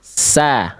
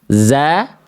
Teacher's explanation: Kalau sin mengalir desisan yang lembut. Kalau zai mengeluarkan suara desisan seperti lebah atau desisan yang tajam.